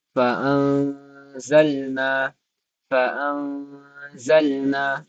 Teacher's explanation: semua itu didengungkan sepanjang dua harakat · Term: ikhfa hakiki